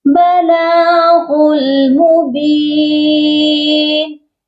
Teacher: غین کو لام کے ساتھ ملا کر پڑھا جائے گا